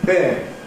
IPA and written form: bɪɪŋ (being)